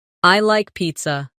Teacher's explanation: Let your voice fall gently at the end.